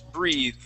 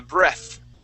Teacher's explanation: with an e at the end and a long e sound, that th is a voiced th. Breathe. Okay, so there's that vibration. Okay, but with a short e and no e at the end, that is a voiceless th.